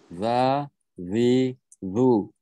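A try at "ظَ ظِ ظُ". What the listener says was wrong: Okey, cuma zu ni tipiskan sikit. Zu.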